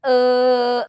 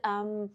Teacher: inglês Eles não falam ã ou é eles vão falar hum você me dá uma fechadinha na boca no final porque o m em final de palavra realmente a gente tem que fechar a boca articular esse som com a boca fechada